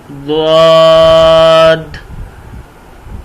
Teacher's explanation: दाढ़ों के साथ ज़ुबान की चौड़ाई लगाएं तो ये लफ्ज़ बनेगा द्वाद।